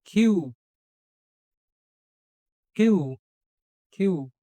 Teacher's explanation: এটা কিউ নয়, কিউ নয়, কয়ের জায়গায় খ উচ্চারণ হবে।